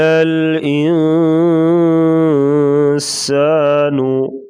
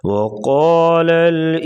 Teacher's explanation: قاف کو پور پڑھیں گے اور نون کے اوپر اخفا کریں گے۔ اخفا کا مطلب ہوتا ہے ناک میں آواز چھپا کر غنہ کرنا، اور غنہ ناک میں آواز لے جانے کو کہتے ہیں، اور 1 الف کی مقدار کے برابر غنہ کیا جاتا ہے۔